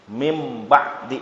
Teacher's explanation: tidak ada sama sekali suara Nun tapi tibalik jadi suara Mim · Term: ikqlab